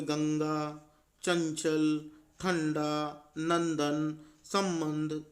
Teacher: जैसे अगर हम कहें गंगा, चंचल, ठंडा, नंदन, संबंध; इन सभी को देखिए , इन सभी में नाक का इस्तेमाल किया गया है। अतः, नाक से हवा बाहर निकालते हुए बोली जाने वाली ध्वनियों को अनुस्वार कहा जाता है।